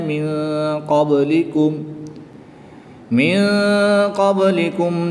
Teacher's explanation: نون ساکن کے بعد قاف حروف اخفا میں سے آ گیا تو یہاں پر اخفا کریں گے، یعنی غنہ زمانی کر کے پڑھیں گے۔